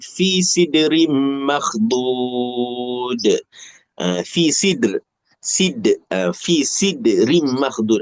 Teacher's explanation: Huruf dal tu qalqalahlah. Tapi dia sebab di tengah-tengah ayat dia qalqalah sughra.